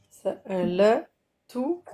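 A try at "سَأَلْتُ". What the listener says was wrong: T'as dit encore la. Soukoun. Ça va être, le dernier, tu mets pas de haraka.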